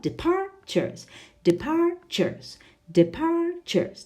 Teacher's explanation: Is the stress on the first, the second, or the third syllable? Well, it's on the second